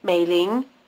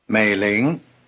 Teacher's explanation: the tones are low Rising